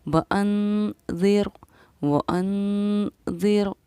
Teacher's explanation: نون ساکن کے بعد حروف اخفا میں سے ذال آ رہا ہے، اس لیے ہم نے اس پر ٹھہراؤ کیا، اخفا کیا